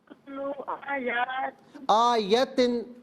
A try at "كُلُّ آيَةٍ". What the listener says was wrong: دیکھیں میں آیتن پڑھ رہا ہوں، آپ آیاتن پڑھ رہی ہیں. آیتن نہیں، یا پر زبر ہے، اسے کھینچنا نہیں. آیتن آیاتن نہیں، آیتن. تی نہیں، تن. آیتن.